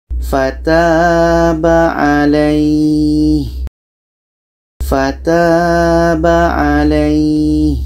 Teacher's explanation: Jadi ya mati sebelumnya baris atas dibaca panjang. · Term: mat lain